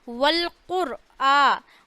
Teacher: والقرآن، قوف کو موٹا پڑھنا ہے